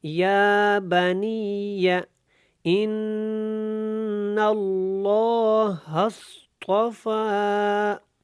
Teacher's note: غنہ کرنا ہے، کیونکہ نون مشدد ہے اور لام اللہ والا ہے، اس کو ہم موٹا پڑھیں گے۔